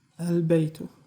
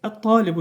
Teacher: Əgər ləmdən sonrakı qaməriyə olarsa, diqqət edin, qaməriyə olarsa, ləm oxunacaq. Əgər ləmdən sonrakı şəmsiyə olarsa, ləm oxunmayacaq. Özündən sonrakı hərfə daxil olaraq onu şədd elələyəcək.